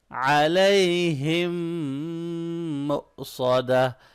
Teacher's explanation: میم ساکن کے بعد میم آ رہا ہے، یہاں پہ ہم غنہ کی ساؤنڈ نکالیں گے، ٹھیک ہے۔ یہاں پر حمزہ ساکن ہے تو حمزہ ساکن پہ ہم لوگ کیا کرتے ہیں، جھٹکا دے کے پڑھتے ہیں، ایسے جرکنگ ساؤنڈ کے ساتھ پڑھیں گے، ٹھیک ہے۔